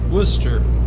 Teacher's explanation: But there is an R, but you don't sound it.